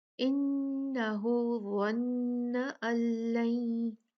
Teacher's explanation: آیت نمبر 14 میں انہو ظن ان لن، ان نون ساکنہ، اس کے بعد لام، اور نون بالکل لام میں مدغم ہو جائے گا. نون ہم پڑھیں گے ہی نہیں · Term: ادغام